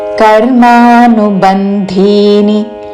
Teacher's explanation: కర్మానుబంధిని అని అల్పప్రాణ ద తో పలకకూడదు